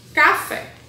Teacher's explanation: a sílaba mais forte é o fé então é a última sílaba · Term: oxítona